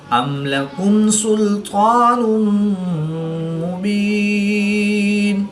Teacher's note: دو پیش کی تنوین کے بعد میم حروف جر معلوم میں سے ہے تو یہاں پر ادغام مع الغنہ ہوگا، یعنی غنہ کر کے پڑھیں گے۔